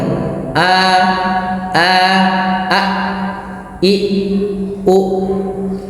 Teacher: Makhraj hamzah merupakan makhraj yang dikeluarkan pada lafaz tenggorokan paling bawah kita.